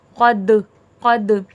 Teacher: جب وہ ورڈ یا تو ساکن ہو یا تو وقف ہو رہا ہو. تو یہاں پر دال ساکن ہے تو آواز دال کی ہم کو پلٹ کر سنائی دے گی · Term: قلقلے کی صفات